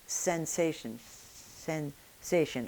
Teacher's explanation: the friction is going to be made against your gum ridge, right behind the upper teeth. And if you look into your mouth with a mirror, it's a little hard to see, but you'll notice that your tongue is curled up and the tip of the tongue is in contact with the gum ridge right behind the upper teeth. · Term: the S in English